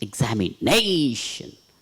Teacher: Nay should be stressed.